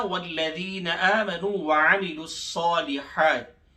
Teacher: والذین کی لام کو سختی سے پڑھیں گے تشدید کی وجہ سے · الصالحات کے صاد کو موٹا اور کھینچ کے پڑھیں گے، صاد کے اوپر کھڑا زبر ہے 2 سیکنڈز کے برابر، ہاتھ یعنی ہاتھ کے اوپر بھی کھڑا زبر ہے، اس کو بھی 2 سیکنڈز کے برابر کھینچ کے پڑھیں گے، ایک الف بقدر۔